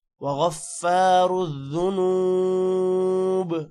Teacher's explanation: با کے نیچے زیر ہے، لیکن وقف کی وجہ سے ہم زیر کو نہیں پڑھیں گے، صرف با پڑھیں گے